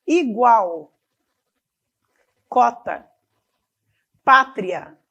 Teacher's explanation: a semivogal vem antes então o som é crescente da semivogal para vogal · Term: ditongo crescente